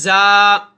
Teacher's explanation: زا کی ادائیگی کے وقت سیٹی کی آواز پیدا ہوتی ہے